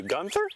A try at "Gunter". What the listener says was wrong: It's Gunter, no H. Trust me, it's Gunter.